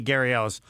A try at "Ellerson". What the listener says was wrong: Can I just, you got to pronounce my name, last name all the way through? Because if you don't, people think I'm somebody else. No, you stop at the Ellers. Yeah, that's you stop. Because if you just go Gary Ellis, then they think it's Ellis.